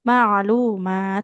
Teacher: Nah, fathahnya ketemu alif kecil berarti harus panjang.